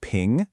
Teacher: the first tone, high and flat, like you're holding a note, ping. Then there's the rising second tone, which kind of sounds like you're asking a question, du.